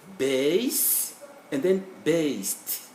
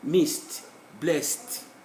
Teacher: We write D, but we pronounce T.